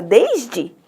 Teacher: E o E final é pronunciado I.